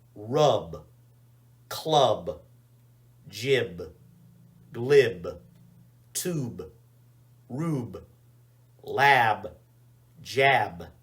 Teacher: with b you get your vocal cords going you should be able to feel it should feel vibration here in your neck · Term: the b sound